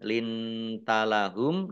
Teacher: nun sukun bertemu dengan huruf ta bacaan ikhfa dibaca samar-samar, humnya dibaca waqaf dan dibaca pendek karena tidak ada tanda panjangnya.